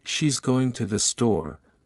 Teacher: in she's going to the store, going and store are stressed. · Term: sentence stress